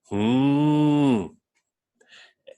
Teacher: It has an H, that aspirated sound, and then a very short I